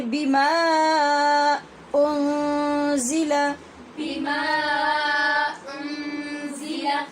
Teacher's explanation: نون پر بھی اخفاء حقیقی ہو رہا ہے کیونکہ نون ساکن کے بعد زا بھی حروف اخفاء میں سے ہے، اور زا جو ہے یہ سیٹی والی آواز کے ساتھ پڑھی جائے گی، نرمی سے نہیں